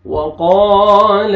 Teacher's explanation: قاف کو موٹا کر کے پڑھیں گے، الف سے پہلے فتحہ، الف مدہ بھی ہے، قاف کو کھینچنا بھی ہے